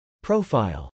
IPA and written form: prˈoʊf.aɪl (profile)